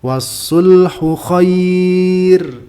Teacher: Ra yang diwakafkan dan sebelumnya ya sukun dibaca tarkik.